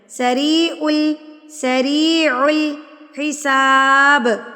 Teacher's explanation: سریع یا ساکن سے پہلے اگر آپ کے پاس زیر آ جائے تو اٹ مینز یہ یا مدہ ہے اور اس کو بھی آپ نے ایک حرکت کے برابر کھینچ کے پڑھنا ہے